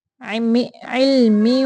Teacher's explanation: आवाज को नीचे की तरफ से गुन्ना करते हुए निकालेंगे